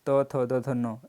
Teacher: और दंत त वर्ग, त, थ, द, ध, न, यह आता है दंत के अंतर्गत